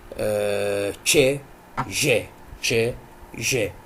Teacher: articulation is the affricates which is Jay Jay Jay Jay were the combination of stopping and friction